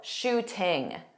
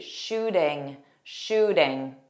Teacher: We use a flap T, so it sounds like a soft D